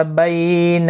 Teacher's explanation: بی علین ہے، تھوڑا نرمی کے ساتھ کھینچ کر ادا کریں گے